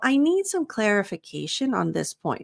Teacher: So you want to emphasize clarification. That's also the most complex word in terms of pronunciation.